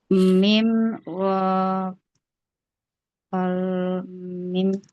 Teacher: Mim merapatkan dua bibir saja ya. Merapatkan kedua bibir disertai dengan gunnah